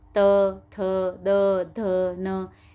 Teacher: अपनी जीवा कहाँ से टकरा रही है? अपने दांतों से टकरा रही है।